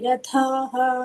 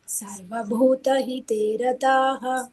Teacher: अत्र महाप्राण नास्ति रताः अल्पप्राण ओन्लि